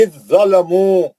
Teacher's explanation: जाल को छोड़ देंगे ज़ोय में चले जाएंगे